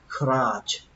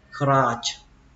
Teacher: Âm này là âm á các bạn nhé, crutch, và kết thúc bằng âm chờ, crutch. Âm chờ mạnh, âm chờ bắn hơi đấy, crutch. Cái nặng.